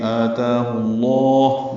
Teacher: لام اسم جلالہ کو پر پڑھیں گے